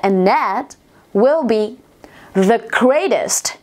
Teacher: mọi người có thể nối âm lại với nhau, giãn lược chữ âm d của chữ and và th của chữ that